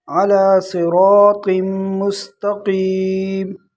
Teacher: مستقیم قاف موٹا ہے، اکثر لوگ اس کو بھی باریک پڑھ لیتے ہیں، یہ قاف موٹا قاف ہے۔